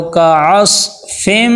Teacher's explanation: صاد موٹے حروف میں سے ہے، سین کی آواز نہ ہو، کعصفم، فا کو میم کے ساتھ ملائیں گے، اور تنوین کے آگے میم حرف جر ملون والا آگے ہے، تو یہاں پہ ہم ادغام مع غنہ کریں گے، کعصفم۔